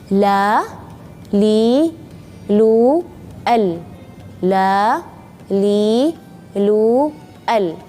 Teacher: kalau kita perhatikan huruf lam ini ketika melafalnya dia lebih tipis suaranya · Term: lam yang tipis